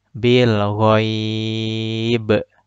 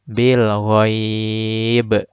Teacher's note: Qalqalahnya dipantulkan dengan skala besar. Dan pantulannya terputus. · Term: qalqalah kubro